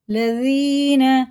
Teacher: دال باریک ہوتا ہے ایک دم